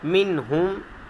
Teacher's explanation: یہاں پر رکنا نہیں ہے، ناک میں آواز لے کر نہیں جانی، اسے ظاہر کریں گے